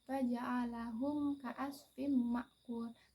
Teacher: dibaca dengan terang ataupun disebut dengan jelas baca dengan jelas tanpa didengungkan di bibir dan juga dengan mulut e yang tertutup hukum bacaannya yaitu di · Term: izhar syafawi